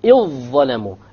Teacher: You just ignore the dhal, you just merge it together. And by the way, every time this occurs in the Qur'an, there will be a shadda over the dha or whatever the letter that is being merged, in order to indicate to you that that should be merged.